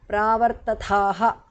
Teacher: The visarga is dropped because of sandhi. The second tha is mahapranaha.